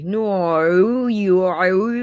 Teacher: So when you hear people go no when they say no, it's just dumb because it's vocal fry.